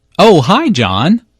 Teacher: notice the rising intonation here is excited to hear from John and is very pleased that he called her I was wondering